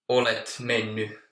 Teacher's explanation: in the spoken language, in the mennyt part, you can hear the T dropping, so it might be olet menny or so